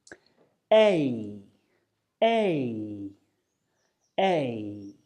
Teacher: as you say a your mouth will start on the position of the air and finish on the position of the E or e sound · both sounds are what we call unrounded so we keep our lips stretched out like we're smiling but our mouth will close a little as we move move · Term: diphthong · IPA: eɪ